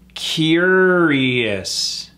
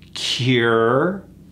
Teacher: That OU is gone. It's just three syllables.